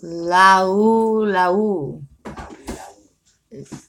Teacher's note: The A and the U blend together. It's called diphthong.